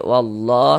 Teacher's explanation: Ini huruf lam jalalahnya dibaca tabkhim, dibaca tebal.